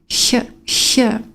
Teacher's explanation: Back of the throat, but slightly sibilant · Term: soft CH